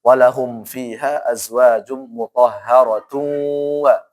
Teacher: Kalau disambung maka harus ada gunnahnya.